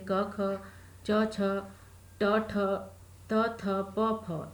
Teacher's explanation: अघोष जिनके उच्चारण में स्वर यंत्रिका यानी कि कंठ में कंपन नहीं होता है, वे अघोष कहलाते हैं।